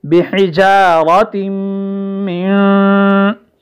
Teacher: تا کو ہم میم سے ملائیں گے اور شامل کر دیں گے اس کو، یہاں پر غنہ واقع ہو جائے گا بحجارۃ من، میم پر بھی غنہ ہو رہا ہے، نون پر